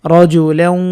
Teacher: ওয়াও এর উপর নাকে নাকে একটু সময় দিতে হবে তাহলে গুন্নাটি আদায় হয়ে যাবে